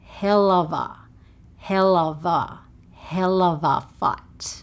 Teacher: instead of the 'O' sound for 'of', we go 'uva'. 'Helluva'. 'Helluva'.